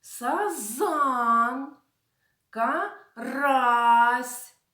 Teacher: наголос в назвах цих риб падає на другий склад